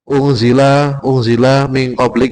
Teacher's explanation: bukan n saja tapi berubah menjadi ng atau eng dan agak Ak dipanjangkan. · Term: bacaan ikhfa